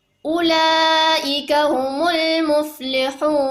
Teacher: wa ulaika itu dibaca panjang karena ada mad wajib mutasilnya yang dibaca 4 ataupun 5 harokat